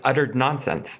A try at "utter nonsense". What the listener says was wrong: See, yeah, and you just said it wrong again. Utter nonsense. Utter nonsense. There's no ed at the end.